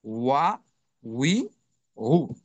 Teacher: ঠোঁটের মধ্যস্থল থেকে উচ্চারিত হবে, অর্থাৎ সেক্ষেত্রে ঠোঁটটা একটু গোল হবে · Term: ঠোঁট গোল